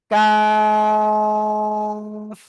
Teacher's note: জিব্বার গোড়া, গোড়া থেকে একটু আগে বাড়িয়া, জিব্বার গোড়া থেকে একটু আগে বাড়িয়া, তার বরাবর উপরে তালুর সাথে লাগিয়ে 4 আলিফ টেনে পড়বো।